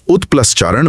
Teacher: एसिमिलेशन आने वाली ध्वनि के लिए पहले से तैयारी कर लेती है। च बोलने के लिए जीभ को तालू पर एक खास जगह रखना होता है। त को पहले ही च में बदलकर मुंह उस आवाज के लिए तैयार हो जाता है। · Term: समीकरण या एसिमिलेशन